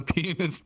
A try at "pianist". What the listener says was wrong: You have to pronounce the A more in that word.